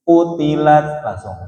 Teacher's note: Ya, qu-nya jangan panjang dulu, Pak. Jangan mampir dulu sama mad thabi'i-nya.